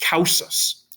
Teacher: So because you have the um in cum followed by the au, you smush them together. Get rid of the um and replace it with sort of au. You blend the words together, and this is going to be pronounced causus. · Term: elision